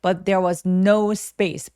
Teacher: 부정어는 무조건 강세 또렷하게 주시고 space 할 때 S 뒤에 P라서 살짝 된 소리 내보기